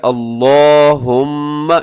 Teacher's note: इसको आपने मोटा भी पढ़ना है लाम को और लंबा भी करना है